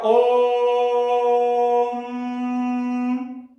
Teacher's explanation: 3 मात्रा से अधिक समय ले लिया, ज्यादा देर तक है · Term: प्लुप्त स्वर वर्ण